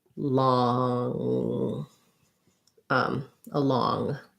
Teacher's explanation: And then along, we have again a schwa, second syllable stress, but in law, long, I have the ah vowel and an NG sound